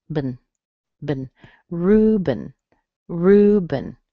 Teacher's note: You notice that E doesn't sound like an E, it sounds like a schwa.